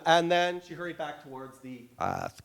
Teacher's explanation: this bilingual speaker of English and Spanish is clearly creaking at the ends of certain phrases